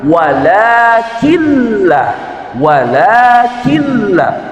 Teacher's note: Wakilla nunnya tidak dibaca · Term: idgam bila ghunah